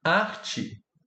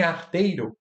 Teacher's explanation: Arte tem tchan e i, né? Então existe a palatalização, né, ou a criação da africada tchan, assim como o alçamento da vogal i, da vogal e que se torna i.